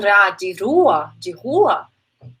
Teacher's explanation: O tap é quando a sua língua, ela toca, por exemplo, ra de rua, ele toca o alveolar, né? Ele toca aquela região e volta.